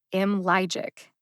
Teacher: If you know music terms, it'll help you understand what I'm about to say. I would say that the syllable ly in IMLYGIC has a staccato quality.